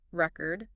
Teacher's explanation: If we stress the first syllable, record, it's a noun